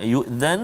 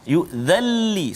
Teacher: masukkan bunyi nun itu ke dalam lam tanpa dengung. Jangan yu'dhan, salah. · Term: Idgham bila gunnah